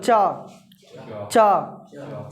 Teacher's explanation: च सट रहा है तालू में सट रहा है ना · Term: च वर्ग